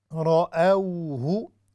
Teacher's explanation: را ہیوی ہے، او واو لین ہے